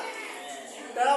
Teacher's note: टेढ़ा करके अपने जीवा का अगला वाला भाग टेढ़ा करके मूर्धा से बोलिए